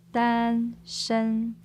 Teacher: Okay, 单身, two first tones, right? Yes, two first tones.